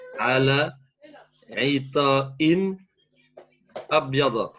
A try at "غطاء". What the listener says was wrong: Très bien, mais par contre, le riz, tu l'as prononcé plutôt comme. Tu as prononcé un aïn, voilà. C'est un riz.